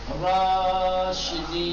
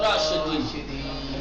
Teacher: کشیدہ پڑھنا ہے. زبر کے 2 برابر کر کے کہیں گے راشدین، نہیں کہیں گے راشدین، راشدین ہے نا. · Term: الف مدی